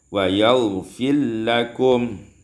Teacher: Pada ayat 28 wa yaghfir lakum idgham ra fil lam diidghamkan ra pada lam menjadi wa yaghfir lakum.